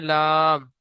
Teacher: জীভের আগার কিনারা এবং সামনের উপরের দুই পাশের দাঁতের গোড়ার সাথে লাগিয়ে উচ্চারিত হয় লাম